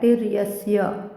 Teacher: ती वर आघात येईल, पुढे रकार आहे